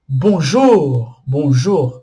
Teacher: as palavras em francês são oxítonas o que que seria oxítonas são as palavras que tem a última sílaba tônica